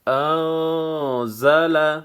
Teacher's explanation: یہاں پہ اخفا ہوگا، اخفا مع الغنہ